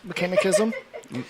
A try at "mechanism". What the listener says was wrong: Mechanism. You're putting the wrong emphasis. You're putting the wrong emphasis on the wrong syllable.